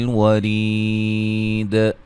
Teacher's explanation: یا مدہ وقفاً بڑی مد کے ساتھ، یعنی کہ مد عارض وقفی ہوگی یہاں